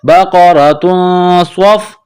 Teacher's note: بقرۃ، صاد فا زبر صف، صاد کو موٹا کرنا ہے، صاد میں سیٹی کی آواز پیدا کرنی ہے. بقرۃ صف، را کے اوپر زبر ہے تو را کو موٹا کرنا ہے. · حروف اخفا ہے تو آواز ناک میں چھپائیں گے، غنہ کریں گے. بقرۃ، صاد فا زبر صف، صاد کو موٹا کرنا ہے، صاد میں سیٹی کی آواز پیدا کرنی ہے.